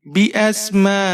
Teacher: हमजा के ऊपर खड़ी जबर और छोटी मद्दा खींच कर पढ़ेंगे 5-6 हरकत तक